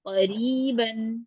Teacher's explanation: जी क़ा को लंबा नहीं करेंगे